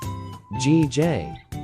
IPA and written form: ɡeɪdʒ (gauge)